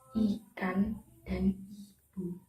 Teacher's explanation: Yang pertama, vokal I adalah vokal tinggi depan tak bundar. Vokal ini dihasilkan dengan menempatkan lidah bagian depan tinggi mendekati langit-langit dengan kedua bibir agak berentang ke samping.